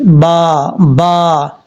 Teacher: با کا مخرج ہے دونوں ہونٹوں کا تری والا حصہ ملے گا تو با پڑھا جائے گا، سختی سے نہیں، نارمل طریقے سے